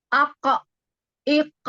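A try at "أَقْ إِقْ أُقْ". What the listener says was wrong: Sedikit lagi dinaikkan pangkal lidahnya ya. Ake, ake. Jadi bukan ake, bukan gitu ya. Ake. Nah, dia lebih tebal ya karena naik pangkal lidah naik. Ake, ike, uke. Ini maju jadinya, makhrajnya maju Ukti. Jadi ke depan lagi. Nah, di belakang. Ake, ake. Masih, masih di depan. Ya. Masih di makhrajnya huruf kaf. ke belakang lagi.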